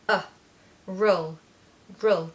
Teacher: now roll is a schwa on the end